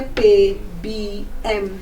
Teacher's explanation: sound articulated by two lips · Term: बाइलेबियल साउंड